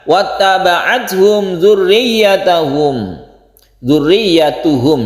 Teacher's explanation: Izhar artinya jelas, syafawi artinya bibir. Maksudnya adalah mim ini adalah makhrajnya ada di bibir. Kemudian tidak kita dengungkan karena izhar, harus jelas mimnya. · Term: izhar syafawi